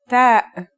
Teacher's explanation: The pronunciation is like the English T, except you should release your breath with a strong burst of air.